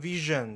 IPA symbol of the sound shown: ʒ